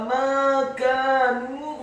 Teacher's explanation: huruf mimnya dibaca tipis, fathah 2 harokat karena setelahnya ada alif. Huruf kafnya dibaca tipis, fathah 2 harokat karena setelahnya ada alif.